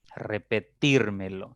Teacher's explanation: debo analizar cuántas sílabas tienen repetir me lo 5 en sílabas la mayor fuerza está en la tercera